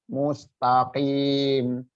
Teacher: Kalau qaf pangkal lidah naik ya, menaik menyentuh perbatasan langit-langit, perbatasan antara tenggorokan dan rongga mulut